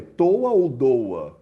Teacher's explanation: o t e o d eles são dentais